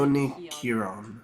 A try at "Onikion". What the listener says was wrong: There's no R actually. It's, Onikion. Kion.